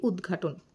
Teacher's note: ত এর পরে গ বা ঘ থাকলে ত বদলে কি হয়ে যাচ্ছে দ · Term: ঘষীভবন